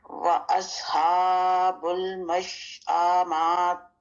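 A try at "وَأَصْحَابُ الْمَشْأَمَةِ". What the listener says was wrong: آ کو اگر آپ نے کیا تو مطلب آپ نے یہاں الف داخل کر دیا. ہا کو تھوڑا سا ظاہر کریں گے کیونکہ کھڑی حرکات ہیں.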